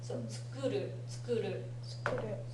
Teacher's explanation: the u part of the tsu is not very strongly emphasized, but the ku gets a little bit more.